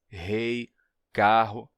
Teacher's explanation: o forte relaxamento do R, em pronúncias como rei, carro, que são bem comuns no Brasil